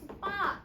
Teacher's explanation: 두 개의 안울림 소리가 만나면 뒤에 있는 예사 소리가 된소리로 바뀔 거래요. · 예사소리랑 예사소리가 만났을 때 앞에 있는 예사소리는 그대로 남아있고 뒤에 있는 예사소리가 된소리로 바뀌는 걸 이걸 된소리 대기라고 하는 거야. 그래서 예사소리 더하기 예사소리가 예사소리 된소리로 변하는 거.